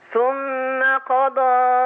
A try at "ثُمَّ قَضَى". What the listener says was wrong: لا انت بتفتحي صح، انت مديتي قوي. ثم قضى. قضى.